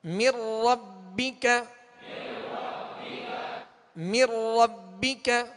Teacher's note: نون ساکن کے بعد را ہے, را حروف یرملون میں سے, لہذا یہاں ادغام تو ہوگا مگر بلا غنہ ہوگا